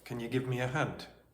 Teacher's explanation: There's a weakening of can. There's a reduction of you to possibly y. There's a possible elision between me and a me uh and linking uh throughout. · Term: connected speech